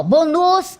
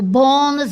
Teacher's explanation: então sílaba tônica é a penúltima